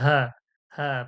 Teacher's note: হালকা পাতলা আওয়াজে, হলকের শুরু কণ্ঠনলীর শুরু থেকে